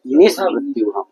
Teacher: मूर्धन्य सकार है, मूर्धा स्थानिक सकार हो जाएगा